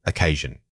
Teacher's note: For occasion, the emphasis falls more toward the middle.